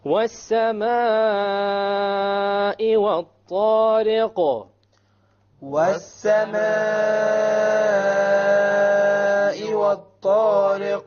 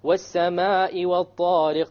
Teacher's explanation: It's a connected mad. So you must make it long.